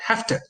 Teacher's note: So the v sound, which was voiced here, becomes voiceless. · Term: regressive or backward assimilation